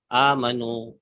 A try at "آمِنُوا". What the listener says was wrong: Okay, you pronounce it as amanu. You pronounce it as amanu. It is aminu. Amanu would be past tense. Amanu becomes past tense plural, and aminu becomes order plural. Aminu is order. Aminu is order.